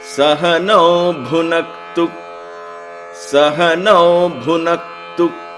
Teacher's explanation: Again, the tu is very short.